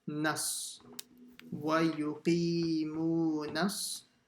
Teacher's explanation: Wa yuqimu. Then the nun will join to the swad in the next word. Nas.